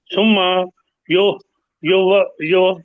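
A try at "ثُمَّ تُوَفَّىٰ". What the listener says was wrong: نہیں نہیں، یہ تا ہے نا، ثم توفا۔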